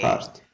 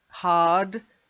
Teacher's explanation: Make sure it's a D. Hard. Otherwise, it might sound like heart.